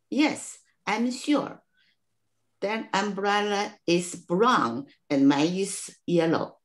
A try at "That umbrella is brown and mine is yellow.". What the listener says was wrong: Yeah, ▁very ▁good.